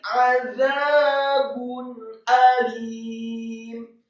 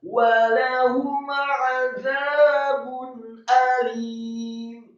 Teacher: Alifnya alim, alifnya fathah tipis 1 harokat, kemudian lamnya dibaca tipis kasrah 2 harokat karena setelahnya ada ya sukun, dan kemudian mimnya disukunkan.